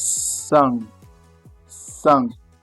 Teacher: Meaning that the N or M they disappear. The vowel becomes what we call nasal.